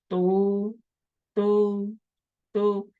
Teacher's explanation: Kalau itu sudah paham benar, sudah bisa merasakan tu itu lidahnya itu ternyata menyentuh gigi atas, ya, dekat langit-langit